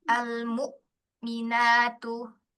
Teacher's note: Di hamzah, sukunnya pakai syiddah dan jahr, tunjukkan dengan jelas